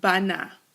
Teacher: the hey is absolutely silent it's not functioning as a guttural it's not functioning as a consonant it's functioning as a vowel it's an aim kriya as such